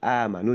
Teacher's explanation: amanu di situ hamzah yang dibaca panjang itu adalah dihukumi sebagai mad badal atau mad pengganti.